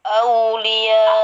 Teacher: Au pakai u ya. Jangan pakai o.